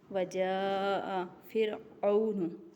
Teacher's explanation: را کو یہاں باریک پڑھنا ہے کیونکہ را خود ساکن ہے